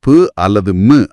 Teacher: இந்த 2 மெய்களும் மேலிதழும் கீழிதழும் பொருந்துவதால, அதாவது 2 உதடுகளும் ஒட்டுவதால பிறக்குது.